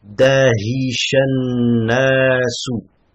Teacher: La même chose ici, nun c'est une lettre shamsiya. Donc an-nas on prononce pas le lam. C'est pour ça qu'il n'y a pas de soukoun.